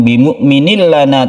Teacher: tanwin bertemu dengan lam idgham bila guna, tidak berdengung, kita masukkan tanwin ini ke huruf lam, kemudian tidak dipanjangkan.